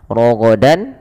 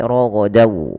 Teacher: Kalau huruf setelahnya waw, maka masukkan tanwinnya ke waw dan ditahan dan dibunyikan dengan huruf waw. Suara nunnya hilang. Rogodan menjadi rogodaw. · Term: idgham bi gunnah